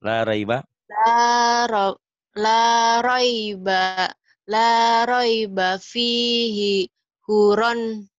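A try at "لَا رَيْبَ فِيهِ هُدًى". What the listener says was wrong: Hunya pendek. Hudan gitu. Lagi.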